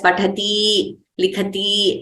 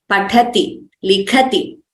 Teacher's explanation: it is important to pronounce these accurately and not prolong the ikara at the end